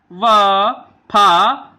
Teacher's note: फिर उसके बाद देखिए वतस्र यानी दंत मूल से, दांतों के बीच से, दांतों की मूल स्थिति से न, ज, र, ल। फिर दंतोष्ठ यानी निचले होठ और ऊपर के दांतों से